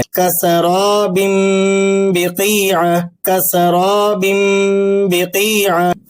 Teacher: تنوین کی آواز ناک سے نکل رہی ہے، با کا تلفظ ہلکا اور واضح ہے اور درمیان میں کسی اضافی میم کا واضح تلفظ بھی نہیں نظر آ رہا۔ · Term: اخفاء شفوی